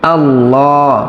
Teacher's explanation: এখানেও আল্লাহ শব্দের লাম পর বা মোটা করে পড়তে হবে, কেননা তার পূর্বে জবর আছে, আল্লাহ। হা এই সদকে এসে ধরবে, কেননা সদে তাসদিদ আছে, আর তাসদিদ ওয়ালা হরফকে তার পূর্বের হরফের হরকত দিয়ে ধরতে হয়।